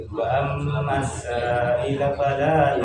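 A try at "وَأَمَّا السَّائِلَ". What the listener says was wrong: Kasih panjang lagi wajib mutasil.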